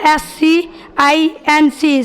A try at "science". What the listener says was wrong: गलत है, साइंस गलत है। साइंस अब सही बोला, ई छोड़ दिया था।